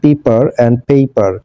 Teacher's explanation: in পেপার অ্যান্ড পেপার the sounds differ as ই অ্যান্ড ইআই